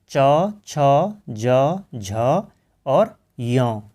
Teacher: उसके बाद च, छ, ज, झ और य, इनको कहा जाता है तालव्य। जब इनका उच्चारण होता है तो हमारी जो जिह्वा है वो तालु को छूती है,